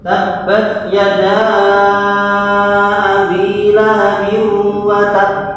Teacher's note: huruf qalqalahnya bertasdid ketika diwakafkan mantulnya niku agak ditekan dahulu baru keluar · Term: akbar